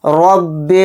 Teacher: را کے اوپر زبر ہے، را کو موٹا پڑھیں گے